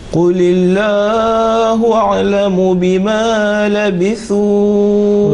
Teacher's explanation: Lamul Jalala has not been pronounced thick but thin because the previous letter Lam carries a kasra